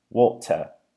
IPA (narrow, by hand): 'wɔːʔtə